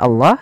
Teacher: pada lafal Allah tadi lamnya tebal, Allahnya tebal, panjangnya pada lafal Allah 2 harokat yaitu mad tabi'i.